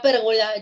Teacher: La palabra pérgola lleva la fuerza de voz, la intensidad en la antepenúltima sílaba.